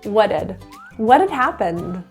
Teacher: the t is pronounced as a flap T that kind of sounds like a d because there are two vowels a vowel in front and a vowel behind so what had turns to what it had what had happened